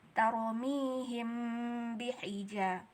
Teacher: Di situ hukumnya adalah ikhfa syafawi karena hukum mim mati. Jadi harus kita dengungkan.